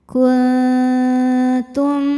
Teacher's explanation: Nah, yang ini kebalikannya dengungnya sedikit. Jadi, suara yang masuk hidung sedikit, aliran suara dari mulut masih banyak. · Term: ikhfa aqrab